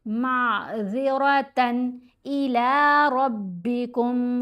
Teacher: ज़ाल को नर्म पढ़ेंगे और रा को मोटा पढ़ेंगे।